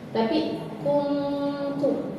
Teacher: nun ketemu tak, maka kita ucapinnya dekat ke taknya.